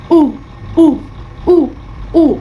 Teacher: huruf U itu bibir kita sedikit maju, bulat, 1 jari. Jaraknya itu 1 jari.